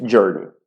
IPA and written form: ˈdʒɜːni (journey)